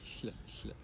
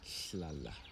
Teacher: your tongue goes up to the palate a bit, touching both teeth, both sides of the teeth, and then letting air through the sides